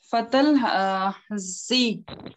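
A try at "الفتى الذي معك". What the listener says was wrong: Fatal ladhi. Pronounce the la. Fatal ladhi maaka.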